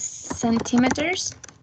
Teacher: These words have 4 syllables, and the stress is in the first syllable.